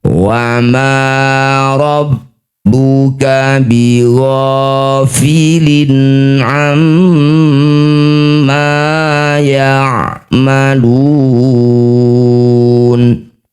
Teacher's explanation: Walikullin darajatum mimma amilu wama rabbuka bighhofilin amma ya'malun A ini kasrah tanwin bertemu dengan ain disebut bacaan namanya izhar halqi. Baca jelas lin ya tidak usah dengung.